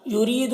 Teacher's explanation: را کو باریک پڑھیں گے اور یہاں پر یا مدہ ہے ایک الف کے برابر کھینچ کر پڑھیں گے.